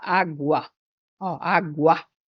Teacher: então Aqui nós temos o encontro vocálico o encontro de vogais esse U ele é mais fraco que o a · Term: ditongo crescente